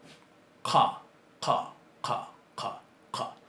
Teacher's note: No llega a ser gutural, pero sí es característico. Es una C que se pronuncia más atrás. Nuestra C se llama velar.